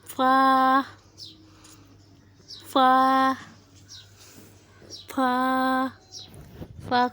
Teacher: جب ثنایا علیہ نیچے ہونٹ کے شکم سے لگے تو فا ادا ہوتا ہے۔ فا جب ثنایا علیہ نچلے ہونٹ کے شکم سے یعنی اوپر کے دو دانت نیچے والے ہونٹ کے اندرونی طرف لگے، فا فا اس طریقے فا اوپر کے دو دانت نیچے والے ہونٹ کے شکم سے اندرونی طرف سے لگے تو فا ادا ہوتا ہے۔